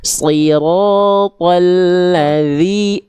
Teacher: Ujung lidah disentuhkan ke ujung gigi seri atas, suaranya mengalir.